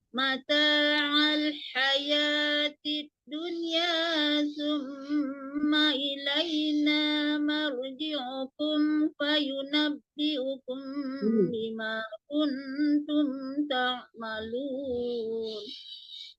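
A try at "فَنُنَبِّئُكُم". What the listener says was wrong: Fanunab bukan fayunab ya, tadi dibacanya fayunab.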